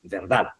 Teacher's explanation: Se escucha más el énfasis, la mayor fuerza de voz en la última sílaba que sería la sílaba da. Y esta es una palabra aguda, sin tilde, pero que termina en D.